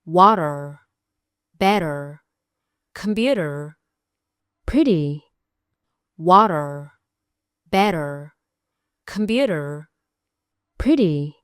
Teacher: dhawaaq degdeg ah oo carabka si tartiib ah u taabanaya saqafka afka. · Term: T flap